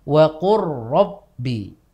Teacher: Tidak dibaca dengan waqul ro, tapi langsung saja huruf ro-nya ditasdidkan. · lam itu masuk ke huruf ro dengan sempurna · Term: idgham kamil